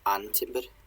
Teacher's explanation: And timber, and the stress is on and.